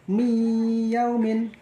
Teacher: Nun matinya dihilangkan, masuk langsung ke ya, mi yaumin. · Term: idgham bi gunah